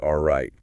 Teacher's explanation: They point out that the T sound is almost cut off, so it sounds more like "all right." Right. · You basically, like, prepare to say the T, but then stop the airflow. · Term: stop T sound